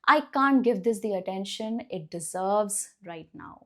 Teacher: Stress on the word deserve.